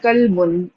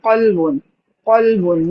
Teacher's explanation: یعنی کہ آپ نے قاف کو موٹا کر دیا تو یہ قلبن بن گیا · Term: موٹا حرف